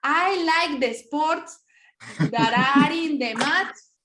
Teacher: Pongo una E antes de la S porque en español no comienzan con S y luego consonante